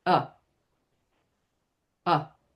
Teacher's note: So it's it's a vowel that doesn't have an r after it in a syllable that is not stress. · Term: schwa